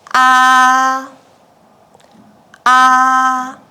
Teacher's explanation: The first tone keeps at the highest line from the start to the end.